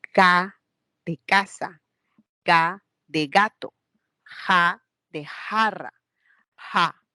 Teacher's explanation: Y luego tenemos la zona velar. En la zona velar se produce un sonido como K de casa, K de gato, ja de jarra